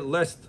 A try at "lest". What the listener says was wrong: Not lost, I said lest. It's an English word. There's a literature word, называется lest. Lest.